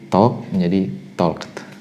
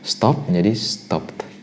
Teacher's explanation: akhiran ed-nya Anda baca sebagai at atau t ya di belakang